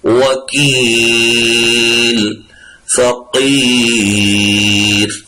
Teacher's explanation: کیونکہ یہ حروف قلقلہ نہیں ہے، لام کو ہم نہیں ہلائیں گے۔